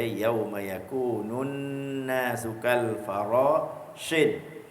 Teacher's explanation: Panjang si yauma yakunun, wajibul ghunnah, wajib dengung. Jadi kita baca cepat ke baca lambat pun kena dengung sikit.